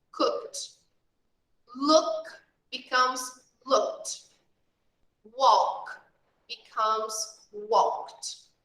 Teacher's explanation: these verbs that finish with K, here like cook, look, walk. We make a sound of T. A sound of T when we make the past.